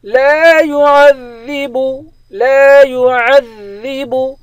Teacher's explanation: عین کو ذال کے ساتھ ملائیں گے، ذال پہ سختی کے ساتھ جمع کر پڑھیں گے